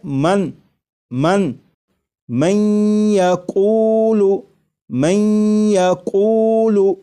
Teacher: نون ساکن کو یا میں ادغام اس طرح کریں گے کہ غنہ بھی ہو